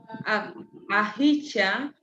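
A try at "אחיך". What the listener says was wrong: Ahika. Not cha. ha. Ahika.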